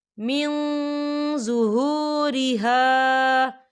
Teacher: دیکھیں یہاں من نون ساکن ہے اور نون ساکن کے بعد ضا آ رہا ہے، اور ضا جو ہے اکفا کا ورڈ ہے، تو ہم یہاں اکفا کریں گے، نون ساکن کی آواز کو ناک میں چھپائیں گے